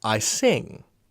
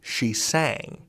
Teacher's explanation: Because the vowel changes. This vowel sound, actually bounces along your mouth. It goes from front to middle to back as you go further and further back in time.